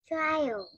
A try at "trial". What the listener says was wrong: Yeah, trial. Good job.